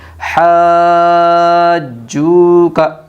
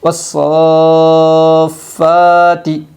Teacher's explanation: حروف مدہ کے بعد والے حرف پر تشدید ہے اس لیے مد لازم کلمی مثقل ہوگا۔ مد لازم کلمی مثقل کو 5 الف کی مقدار کھینچ کر پڑھے گی۔